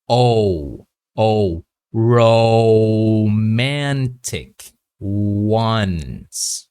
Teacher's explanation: very rounded lip, and then to slowly close that lip. Okay, this will produce the O and the W.